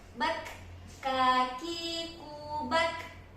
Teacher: kaf ini dia ada hams, jadi ada aliran nafasnya.